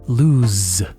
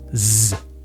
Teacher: If your mouth is not vibrating a little bit at least, you're not doing it right. In English, we call this a voiced consonant sound. In other words, you have to use your voice to make the sound.